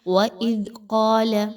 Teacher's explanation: قاف جو ہے وہ موٹا حرف ہے، اس کو پر کر کے پڑھیے، کاف کی طرح باریک نہیں پڑھنا۔